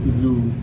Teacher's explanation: वाव मद्दा को एक अलिफ के बराबर खींच करके अदा करेंगे